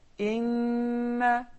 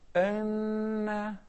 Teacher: instead of saying inna, one may say anna, and that doesn't sound like neither kasra nor fatha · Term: imala